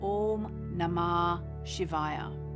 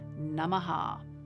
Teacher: For example, you may know the chant Om Namah Shivaya. If another word follows Namah, then the second part of the vowel is not pronounced, so Om Namah Shivaya.